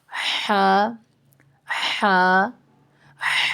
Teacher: ہا وسط حلق سے یعنی جو حلق کا درمیانی حصہ ہے اس سے ہا ادا ہوتی ہے